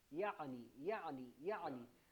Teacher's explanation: اس کے اردو کا جو لفظ ہے نا یعنی، اس کو عین کے مخرج کے ساتھ جب ہم پڑھیں گے، عین کا مخرج میں بتا دیتا ہوں لیکن اس کی مشق ہمیں بہت کرنی پڑے گی. عین کا مخرج ہوتا ہے وسط حلق